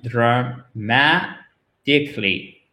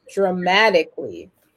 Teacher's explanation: Et vous voyez que sous le T, là, vous avez un espèce d'arc de cercle qui indique, et ça, c'est typique et vraiment typique de l'American English, que le T est presque prononcé comme un de